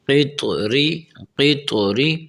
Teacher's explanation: طا اس طرح آواز نکلے کہ طا پڑھتے وقت تا بھی محسوس نہ ہو، ٹھیک ہے، طا اپنی آواز میں ہو، اصل میں ہو، قط ری، قط ری۔